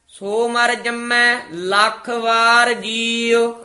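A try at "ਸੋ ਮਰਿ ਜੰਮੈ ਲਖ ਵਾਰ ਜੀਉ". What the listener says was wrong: इसे तरह उच्चारण करना है, जिस प्रभ अपना विसरै इति विश्राम सो मर जम्मै इति चमक लख वार जीओ। लखवार नहीं कहना, लख वार जीओ।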